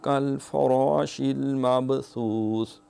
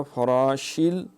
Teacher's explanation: شین میں تفشی ہے